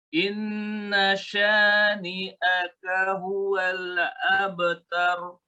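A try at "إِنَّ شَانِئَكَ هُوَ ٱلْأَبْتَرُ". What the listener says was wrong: Huwal. Jangan mantul. Ulangi.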